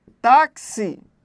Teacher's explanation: É paroxítona, forte ao tá, terminou em I, por isso leva acento.